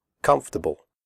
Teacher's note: The word comfortable has 3 syllables, not 4. The OR is silent. We say comfortable, not comfortable.